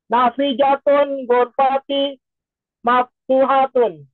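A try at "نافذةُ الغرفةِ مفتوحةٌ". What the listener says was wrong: Jangan ditanwin. Nafidatu mudhaf.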